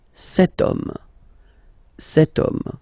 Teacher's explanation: H is not pronounced, so the first sound that we hear is O